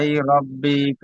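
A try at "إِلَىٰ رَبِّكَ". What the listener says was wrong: ইলাই নয় ইলা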